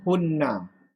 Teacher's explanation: Hunna dengan dengung, dengan syaddah.